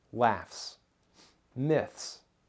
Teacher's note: The K, T, P, and F sounds are voiceless, and in the word myth, the TH sound is voiceless. The vocal cords do not vibrate with voiceless sounds, so the S that follows them is also voiceless.